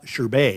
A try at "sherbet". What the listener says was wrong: There's no R in sherbet in that part of sherbet. There's SHERBET. Sherbet. Not sherbet.